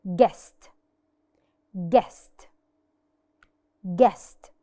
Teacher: We did not pronounce the sound U. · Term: silent U